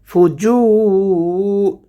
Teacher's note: ফাআলহামাহা ফুজুরাহা, জু এক আলিফ টান হবে, হা এক আলিফ টান হবে। ফুজু, জিম হরফটিকে উচ্চারণ করতে হবে জিহ্বার মধ্যখান, তার বরাবর হবে তালুর সঙ্গে লাগাইয়ে উচ্চারণ হবে জিহ্বার মধ্যখান থেকে। ফুজু রহা, রহা, রটা এখানে পুর করে পড়ব, হা এক আলিফ টান হবে।